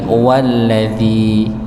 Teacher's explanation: Karena dia sifatnya hanya sebagai tambahan, maka wwunya masuk kepada lam. Bukan wa alladzi, tapi walladzi ya. Langsung masuk pada lamnya. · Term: hamzah